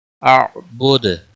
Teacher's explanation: دال وقف کی صورت میں ساکن ہوگا اور اس کے اوپر قلقلہ بھی ہوگا